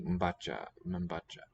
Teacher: cluster here, MB, or it could be a prenasalized, mba, where the syllable boundary comes after me, mba, cha